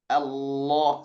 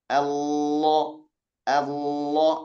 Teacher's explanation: Sangat terasa sekali ada penekanan pada ujung lidah. Mula-mula dia di sisi lidah, ditekan ke ujung lidah, berbelok dia. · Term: lam yang tebal